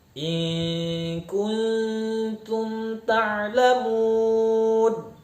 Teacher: maka harus kita pastikan bunyi mim sukun kita baca dengan jelas di bibir